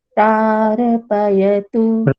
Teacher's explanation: प्रारपयतु, ये प्रायः जितने भी अभी तक बोले हैं आज की डेट में प्रायः गलती हुई है। तो ये प्रारपयतु नहीं बोलना है, इसको प्रार, रेफ को बोलते समय दबा देना है